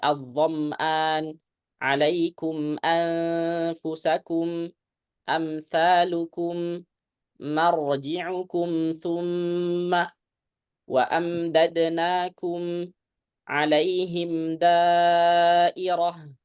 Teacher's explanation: ini semua harus menyempurnakan mim tidak boleh apa terlalu panjang gunahnya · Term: bacaan izhar